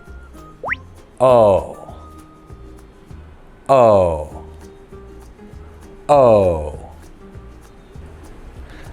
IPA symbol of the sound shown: əʊ